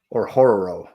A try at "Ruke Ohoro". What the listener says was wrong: You gotta roll the R though.